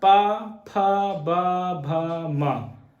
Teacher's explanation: जब आप लोग पा बोलेंगे, पा, पा बोल के देखो तो क्या होगा? दोनों ओष्ठ हमारे आपस में टकरा रहे हैं · ये पांचों वर्ण हम आप लोगों को बोल के दिखा रहे हैं, तो हमारे ओष्ठ क्या हो रहे हैं? आपस में मिल रहे हैं।